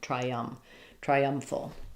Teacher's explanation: you'll notice there's a little bit of a y connecting because I have a front eye vowel and I need vowel to vow linking between my eye and my um, triump triumphal.